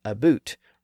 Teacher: Americans will tend to shift the vowel all the way back to its original ooh sound